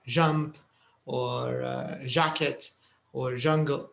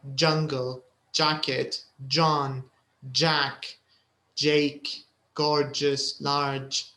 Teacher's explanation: the only thing you need to pay attention to is that there is a bit of a d sound